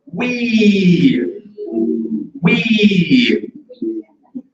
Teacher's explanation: the high front vowel with the E